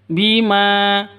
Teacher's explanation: Ma panjang dua ketukan ada Alif diawali dengan fathah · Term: Mad asli